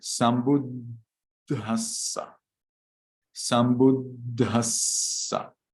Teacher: you need to get stuck at the D, stuck at the S